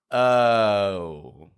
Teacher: making their voice clear in the pure vowel and making the ending part weak and quiet